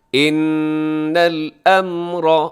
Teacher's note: ان میں کیا ہے جی، نون مشدد پہ غنہ ہے، آواز کو ناک میں لے جائیے گا. ان الامر، را موٹا ہے کہ را کے اوپر حرکت ہے.